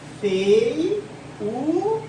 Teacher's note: O U realmente é uma vogal, só que esse I aqui é uma semivogal, é um som fraquinho. Pode perceber, ó, fei, ó, o E é forte, é vogal, só que o I é fraco, é uma semivogal, ó, feiura, tá?